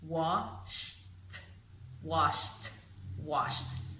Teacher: It ends in that whisper, sh, voiceless, wash. So that ED ending, we will pronounce it as a T, washed, washed, washed.